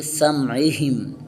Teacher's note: ہا کو حروف حلقی میں سے نیچے والے حصے سے ادا کریں گے